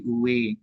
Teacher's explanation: kehnya hilang, tinggal uwe-nya doang.